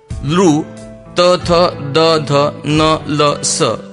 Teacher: लृ, त, थ, द, ध, न, ल, स यांना दंत्यवर्ण म्हणतात, कारण यांचा उच्चार करताना जीभ दाताला स्पर्श करते